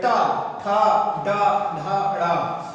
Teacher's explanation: इन वर्णों को जब आप बोलोगे या उच्चारित करोगे, जो जीभ होती है वो पलट के पीछे जाती है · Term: टा वर्ग